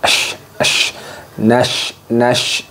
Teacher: Menyebarnya udara dari arah samping lidah. Tafashi, ash, ash, nash, nash.